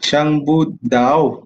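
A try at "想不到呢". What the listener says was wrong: Bu tak ada bu sound lah. Bu jadi pu. Putar punya bu. Siang budau. Tau. Siang budau.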